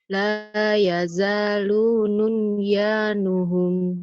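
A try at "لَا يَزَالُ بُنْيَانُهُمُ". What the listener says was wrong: bukan nun, bun. Uang satu di bawah, satu di atas titiknya. Nun bun atau ya. Janya panjang. La yazalu bunyanuhum.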